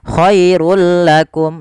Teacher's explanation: awalnya Khairun ketika bertemu lam langsung dimasukkan ke huruf lam tanpa ada penahanan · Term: Idgham bila gunah